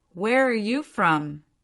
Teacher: The are gets attached to where.